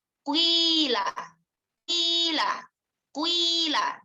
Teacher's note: Jadi yang wi-nya di situ lebih panjang daripada yang harokat dhammahnya. Yang menunjukkan bahwa di sini adalah adanya perpaduan atau adanya penggabungan 2 harokat, yakni harokat kasroh dengan harokat dhammah. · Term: ismam